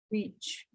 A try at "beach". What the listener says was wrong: It's long. Short means a different thing.